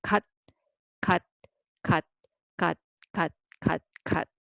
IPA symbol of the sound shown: 갇